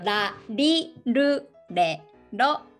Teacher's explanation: the not exactly r sound, close to l sound, but in the middle